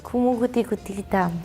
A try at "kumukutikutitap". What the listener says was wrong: P at the end, so it's.